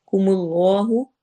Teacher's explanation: کم اللہ اس میں جلالہ بھی ہیوی پڑھا جائے گا